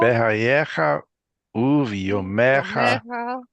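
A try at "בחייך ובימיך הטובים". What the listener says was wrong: It's excellent. Excellent.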